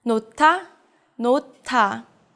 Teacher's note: In this word, the 히읗 combines with the 디귿 and makes it aspirated. So it becomes a ti읕 sound.